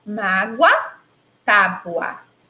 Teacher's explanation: o som do O Ficou muito parecido com o som do U. E aí são letras diferentes, mas que na fala aparecem aí com som semelhante.